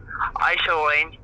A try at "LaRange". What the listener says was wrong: My last name is pronounced LaRange with an L. As in LaRange. Duck LaRange. It's French.